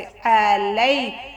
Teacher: लाम को पतला पढ़ना है और या को थोड़ा नरम लहजे से